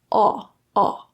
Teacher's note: It's very similar to ah with the open, relaxed lips, but it has a little bit more tensed rounding.